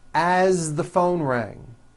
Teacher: As, you pronounce it with a voiced Z.